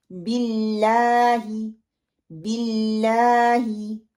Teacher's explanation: हमने अल्लाह को उसके लाम को 2 दफा ही लंबा करना होता है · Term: खड़ी जबर